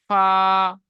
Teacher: নিচের ঠোঁট ভিজে অংশ এবং সামনের উপরে দুই দাঁতের আগার সাথে লাগিয়ে উচ্চারিত হয় ফা